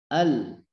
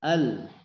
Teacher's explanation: Kalau kita ambil contoh 5 huruf tadi dari huruf lam, ya. Ujung lidah kita menempel di langit-langit bagian depan.